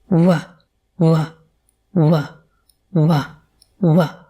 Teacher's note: This sound is made with both lips rounding, creating a small space through which the sounds travel. This sound is voiced, which means you should feel that vibration. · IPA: /W/